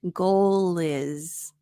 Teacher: Here we have the L consonant sound linking to the I vowel sound.